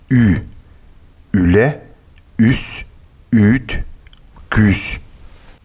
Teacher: звук должен находиться в том же положении, что и при произнесении гласного «и», но губы должны быть округлены, как при произнесении звука «у». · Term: Гласная «ü»